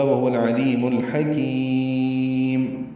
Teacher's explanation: العلیم اور الحکیم دونوں میں وسط حلق سے ادا ہونے والے حروف عین اور حا ہیں لام ساکن کے بعد، اس لیے دونوں لام پہ اظہار قمری ہوگا، کیونکہ عین اور حا دونوں حروف قمری میں سے ہیں.